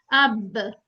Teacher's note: पहले होंठ मिलते हैं, फिर अलग हो जाते हैं, फिर आवाज आती है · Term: कलकला